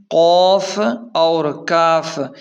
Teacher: ان دونوں کی مخرج زبان کی جڑ سے ہے